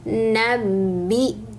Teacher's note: Nabi kemudian hamzah sukun maka dihentak